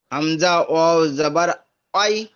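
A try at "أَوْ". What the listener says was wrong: আউ, ওয়াই নয়, আউ। হামজা ওয়াও জাবার আউ, হামজা ওয়াও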